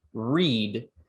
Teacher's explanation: in read you might feel that your tongue isn't necessarily touching the alveolar ridge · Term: approximants